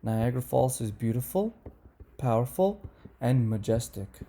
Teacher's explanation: if the list is complete the last example in the list has falling intonation